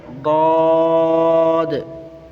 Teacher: زبان کی کروٹ اپنی داڑھوں سے لگائیں